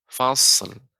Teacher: Ini bukan huruf qalqalah sehingga nggak boleh langsung kita pantulkan fasl tadi. Jadi kita mengucapkan sod, berikan huruf sifatnya banyak.